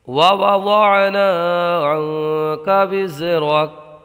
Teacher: نون ساکن میں اخفا ہوگا، غنہ کر کے پڑھیں گے۔ را کو پر پڑھیں گے اور کاف کو ساکن کر دیں گے۔